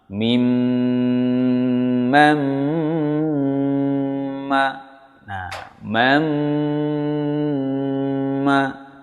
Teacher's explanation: Kenapa idgham bi ghunnah? Karena ada nun sukun bertemu mim. Maka membacanya harus mendengung yang lama.